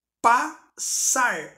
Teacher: na hora que eu vou pronunciar sai apenas som de um s